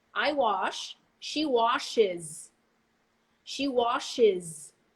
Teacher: the es that you're going to include is going to actually be i z